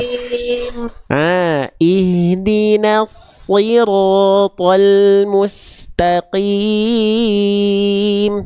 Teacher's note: Qim vokal i jelas, tengah lidah diangkat ketika vokal i keluar.